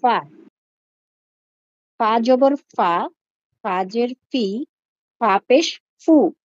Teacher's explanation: মাখরাজ নিচের ঠোঁটের পেট সামনের উপরের দুই দাঁতের আগার সঙ্গে লাগিয়ে